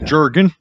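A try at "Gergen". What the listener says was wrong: No, it's Jergen with a G instead of a J. Jergen.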